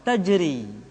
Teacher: Ra dibaca tipis ketika dia berharakat kasrah